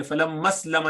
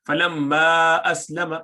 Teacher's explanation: حمزہ قطعی جو ہوتا ہے اس کو نہیں گراتے، اس کو اس میم کے ساتھ نہیں ملا سکتے